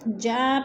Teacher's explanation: جا پہ مد متصل ہے، 4 الفی مد ہے، ہم نے اس کو 4 حرکات کے برابر لمبا کر کے پڑھنا ہے.